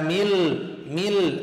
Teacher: إدغام كامل لا يمد، كأن النون غير موجودة، مل من الميم إلى اللام، مل غوب.